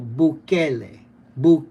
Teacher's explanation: The emphasis on the second syllable.